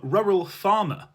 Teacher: London English began to lose the letter R unless it came before a vowel